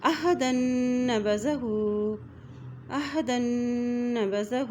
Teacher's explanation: ہا کے اوپر الٹا پیش ہے، اس کو ایک حرکت لمبا پڑیں گے